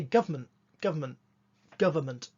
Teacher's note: you don't usually put in that n sound it's because the n sound isn't there it's not government however